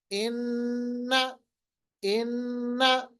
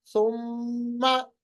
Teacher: अपनी जो जुबान है ऊपर की तरफ उठाइए, आवाज को नाक के अंदर ले आइए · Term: गुन्ना